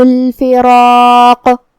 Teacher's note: آخری میں حرف القاف پہ رکیں گے تو اس پہ جزم سے رکیں گے. لہذا ہمیں قاف کو قلقلہ سے ادا کرنا ہے · کلمت الفراق میں یہاں را اور مد الف کا دھیان رہے. ہمیں یہ دونوں حرف کو بھاری آواز میں ادا کرنا ہے.